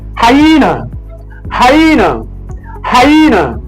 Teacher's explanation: The letter Y forms the I sound. So it doesn't have the Y sound.